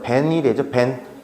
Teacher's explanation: 시옷이 디귿으로 바뀐 음절의 끝수의 위치. 그다음에 머리에 있는 미음 때문에 디귿이 니은으로 바뀌어. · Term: 비음화